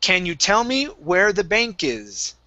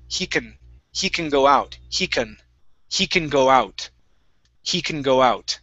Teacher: Most of the time, we don't say can. It usually comes out as kun.